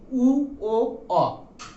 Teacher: ঠোঁটের আকৃতিটা, ওষ্ঠের আকৃতিটা বর্তুলাকার কুঞ্চিত হয়ে যায়, ঠিক গোল হয়ে যায়, এমন গোল হয়ে যায়। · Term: কুঞ্চিত ধ্বনি